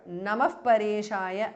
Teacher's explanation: Visarga changes to Upadhamaniya